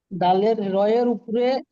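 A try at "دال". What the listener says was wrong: দাল, ওটা র নয়, দাল।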